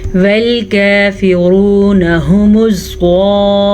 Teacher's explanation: زوا کو ہم نے پر پڑھنا ہے۔ زوا ہمیشہ ہی پر پڑھی جاتی ہے